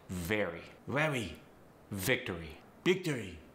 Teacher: someone with a Chinese accent might have difficulty pronouncing that V sound with the teeth on the lips